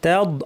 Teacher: এখানে দদটাকে আমাদের খেয়াল করতে হবে, দদের মাখরাজ আপনাকে মনে করে দিই, জিহ্বার 2 পাশ এখানে সবুজ রং করা আছে, এটা দাঁত বরাবর লাগিয়ে গাল থেকে আওয়াজ আসবে, তাদ। আবার তাটাকে ভারী করবেন না, দদ ভারী, তা পাতলা, তদ বলবেন না, হ্যাঁ, তদ না, তাদ।